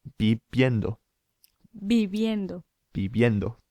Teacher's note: the V sound, it's kind of halfway between our English B and V.